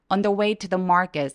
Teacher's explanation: market 엄청 긴 장모음이기 때문에 소리를 여유롭게 소리내 주세요